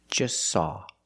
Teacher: We see the T is between consonants, so don't pronounce it. It's silent. Just saw. You link the S with the S.